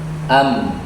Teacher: Ada mim sukun. Nah, mim sukun itu dua bibir